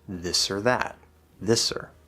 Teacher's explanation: the word or is usually most of the time reduced to ER if you don't have a special reason to emphasize this